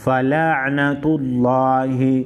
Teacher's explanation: لفظ اللہ کو موٹا کر پڑھیں گے لفظ اللہ سے پہلے والے حرف پر پیش ہے